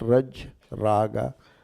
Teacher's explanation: Because that a gets long. They call it adivruddhi, the first vowel becoming long. You look at raj, raga, the first vowel became long, you know.